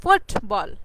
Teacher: এই ফুটবল ওয়ার্ডের মধ্যে কিন্তু ফুট, এই ফুট কথাটার মধ্যে কিন্তু আমাদের জোর প্রয়োগ করতে হয়